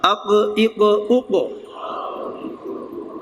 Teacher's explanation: توجہ کریں گے تھوڑی سی تو مخرج جو ہے وہ یہ ہے کہ زبان کی جڑ اور اوپر کا نرم تالو، ایک تو یہ جو سامنے ہوتی ہے نا وہ زبان کی نوک ہے، اور جہاں پہ وہ پیچھے کوا ہے وہ زبان کی جڑ ہے، تو اس کا تعلق اس کے ساتھ ہے۔ زبان کی جڑ اوپر تالو سے، نرم تالو سے ملے گی تو قاف ادا ہوگا